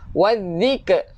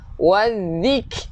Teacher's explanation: Kaf kita keluarkan angin.